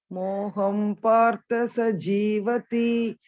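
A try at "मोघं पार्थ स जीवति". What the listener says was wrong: Ma'am, this is not ha. This is ka ga. Mogham partha sajivati.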